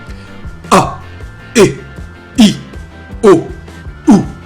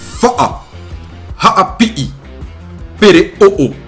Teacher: Le son produit par l'occlusive glottale est un son bref, abrupt, qui provient de la gorge et de la poitrine.